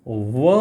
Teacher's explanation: व का उच्चारण स्थान होता है दंत और ओष्ठ, यानी कि दोनों को मिलाकर के फिर अपन बोलते हैं तो उसको कहते हैं अपन दंत ओष्ठ, दंतोष्ठ।